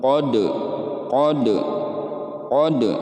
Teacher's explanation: maka dibaca Qalqalah sugro nah ini dibacanya memantul